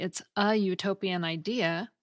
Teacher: the U at the beginning of utopian makes a consonant Y sound